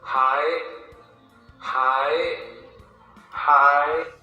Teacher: it's just going to be going up, and you just let it sit there. You don't bring it back down. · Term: high tone